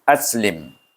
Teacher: Lam ditemukan dengan mim yang mati. Jadi kita baca lim. Terus tutup bibir. Tak ada panjang.